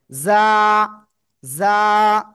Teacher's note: জিহ্বার আগা সামনের নিচে 2 দাঁতের পেট ও আগের সাথে লাগাবো, লাগিয়ে এরকম একটু আওয়াজ করে আমরা 1 আলিফ টেনে উচ্চারণ করব।